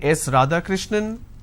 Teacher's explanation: now it goes on a rising tone